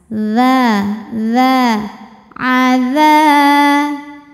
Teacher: ujung lidah sentuhin lagi sama ujung gigi seri atas dza dza kemudian karena depannya ada Alif kita Ayun lagi satu